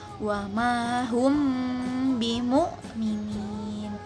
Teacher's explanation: mim sukun bertemu dengan huruf ba, maka dilafalkan samar dengan disertai dengung atau guna. Ada dua pendapat nih, yaitu dengan sedikit meregangkan bibir atau merapatkan kedua bibir. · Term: ikhfa syafawi